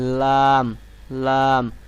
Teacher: জিহ্বার আগার কিনারা, অর্থাৎ আপনার জিহ্বার যে সামনের একদম সামনে যে আগাটি আছে এই আগাটাকে উপরের দাঁতের মাড়ির সঙ্গে লাগাবেন, লাগায় উচ্চারণ করবেন লাম, লাম।